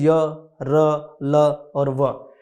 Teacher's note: इन व्यंजनों का उच्चारण स्वर तथा व्यंजन के मध्य का सा होता है। उच्चारण के समय जीवा मुख के किसी भाग को स्पर्श नहीं करती। · तो बच्चों आप देखोगे कि इनका जब आप उच्चारण करोगे तो जो हमारी जीभ है वो मुख के किसी भी भाग को स्पर्श नहीं करती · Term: अंतस्थ व्यंजन